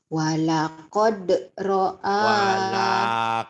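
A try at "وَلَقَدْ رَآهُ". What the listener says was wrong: Walakod-nya pendek. Jangan walakod. Jangan ditahan. Nanti kebiasaan.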